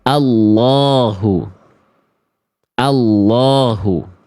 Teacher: maka lafaz Allah-nya dibaca lam-nya tebal